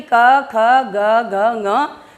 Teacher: जो प्रेशर पड़ रहा है वो कहाँ पर पड़ रहा है? गले में पड़ रहा है। गले में पड़ने के कारण हम इसको बोल देंगे कंठ्य।